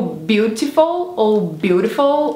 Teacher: ou simplesmente não falam o T, ou transformam em um D misturado com um R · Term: o T dos americanos